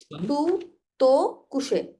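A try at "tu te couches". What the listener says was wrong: কুশে ইয়েস এর তো silent, yes silent, ওটা বলেছি না, এটা সেম সাউন্ড, তাই না?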